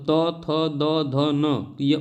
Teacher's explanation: उच्चारण स्थान कहां से होता है तो दांत से होता है